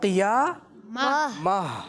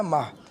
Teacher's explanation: تو جب آپ وقف کرتے ہیں اور آخر میں گول تا آئے, یعنی گول تا پہ وقف کریں, تو اس کو ہا ساکن سے تبدیل کرتے ہیں